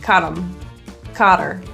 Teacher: A reduction that typically happens with words like he, him, her, his, is that the H is deleted or thrown out altogether. So him will sound like caught him, or her might be caught her. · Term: deletion of the H